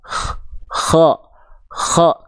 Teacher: kalau huruf Ko Dia ada nafasnya keluar